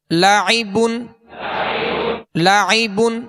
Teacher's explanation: عین میں حمزہ کی آواز پیدا نہ ہو